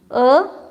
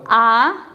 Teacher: अ बोलने के लिए जितना काल लगा उससे दुगुना काल आ बोलने के लिए लगना चाहिए